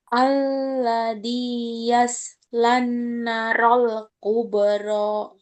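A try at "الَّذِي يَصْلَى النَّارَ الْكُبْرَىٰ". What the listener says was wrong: Nanya panjang nak. Narol.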